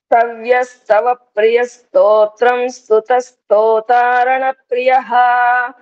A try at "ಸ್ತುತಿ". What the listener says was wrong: ಸ್ತುತ ಕಾದು ಸ್ತುತಿ. ಸ್ತುತ ಕಾದು ಸ್ತುತಿ. ಸ್ತುತಿ ಸ್ತುತಿ ಮಾಡ್ಕೊಳ್ಳಿ ಇದನ್ನ.